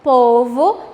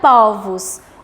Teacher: nós temos aí o timbre do o fechado, o, de povo. No plural, eu altero para o o aberto, né? Esse som aberto e fica povos.